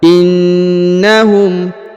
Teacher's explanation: huruf na ditahan dan ditekan karena terdapat tanda tasdid